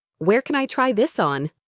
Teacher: Can becomes kun. It's very soft and unstressed